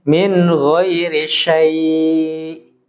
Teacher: di kalimat syai' ini ketika waqaf itu panjang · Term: hukum lin